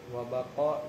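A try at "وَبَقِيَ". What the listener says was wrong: Wabakia. Bakia ya beko bukan bako ya beki.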